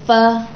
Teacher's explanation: تو ثنایا علیہ کا کنارہ جب نیچے والے ہونٹوں کے تری والے حصے سے لگے تو فا ادا ہوتا ہے